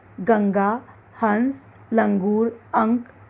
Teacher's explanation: अनुस्वार, जिसका उच्चारण करते समय ध्वनि केवल नाक से निकलती है,